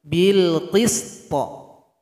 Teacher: Jadi cara berhenti di sini huruf to kita sukunkan sehingganya nanti ketika dia berhenti harus diberikan bunyi qalqalah. Tapi huruf yang sebelumnya sempurnakan dulu.